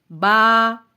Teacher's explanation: با بند ہونٹوں کے گیلے حصے سے ادا ہوتا ہے، با کو جب ادا کریں تو ورٹیکلی منہ کو کھولیں یعنی اسمائلنگ فیس سے، با ہونٹوں کو پھیلائیں گے۔